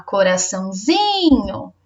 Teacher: O zi é a sílaba tônica